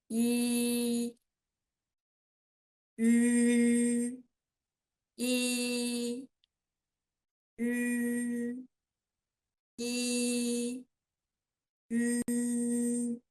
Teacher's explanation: first yi and then just round your lips. You can get yu.